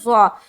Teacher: ضا کا مخرج ہے زبان کی نوک اور ثنایا علیہ کا کنارہ